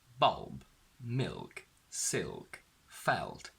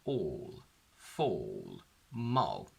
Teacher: The dark L appears before consonants: bulb, milk, silk, felt, and at the end of words: all, fall, mull. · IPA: /ɫ/